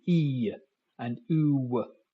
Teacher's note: so you get a y at the end of the E and you get a w at the end of the U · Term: Glide, glide